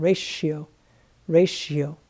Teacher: t i o r a t i o this combination here the t i o makes this t sound like an s h in english